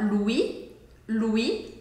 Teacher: o S no final do Louis a gente não fala. Louis é como se fosse o nome Luiz em português.